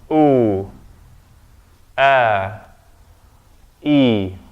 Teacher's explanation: The first thing I'm doing is that they're closed, then I open them to say the oo. But before that oo, my vocal cords are closed, there's a hamza there.